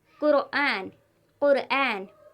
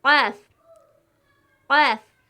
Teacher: یہ حرف حلق سے نکلتا ہے اور بہت موٹا تلفظ ہوتا ہے